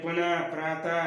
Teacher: विसर्ग का उच्चारण प्रायः ह की तरह होता है